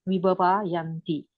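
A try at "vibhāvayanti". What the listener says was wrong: You pronounce without a long A. The way that I understand idea is that there's a short A.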